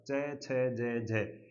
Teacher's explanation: 4 वर्ण च, छ, ज, झ, ये स्पर्शी भी होते हैं और संघर्षी भी होते हैं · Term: स्पर्शी संघर्षी